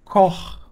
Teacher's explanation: perceba que agora eu estou fazendo na garganta